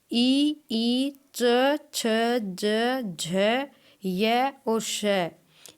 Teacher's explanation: इनका जो उच्चारण स्थान है वह होता है तालू से